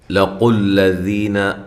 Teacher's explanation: لام کو باریک، قاف کو موٹا کرنا ہے